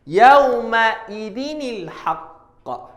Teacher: tanwin, tak kira lah atas, bawah ke, depan ke, bertemu dengan hamzah wasal, maka tanwin tadi kita baca satu baris, kemudian tambah nun baris bawah. Maksudnya dekat sini yauma idzin ni daripada yauma idzin.